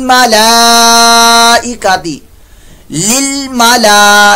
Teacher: इस पर मद भी आ रही है, ये मद मुत्तसिल है, इसको 2 ढाई या 4 तक लंबा कर सकते हैं